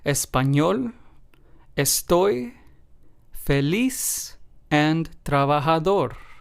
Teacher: in all four of these words, we stressed the very last syllable because, of course, this is what this rule asks us to do. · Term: word stress